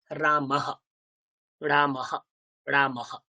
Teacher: বিসর্গের আগে যেই বর্ণ আছে সেই বর্ণের মতো কিন্তু বিসর্গের উচ্চারণ হবে